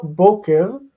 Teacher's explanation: the word stress is on the first syllable. We see the presence of a segol breaking the consonant cluster.